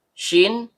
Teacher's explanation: tengah lidah naik memantul ke langit-langit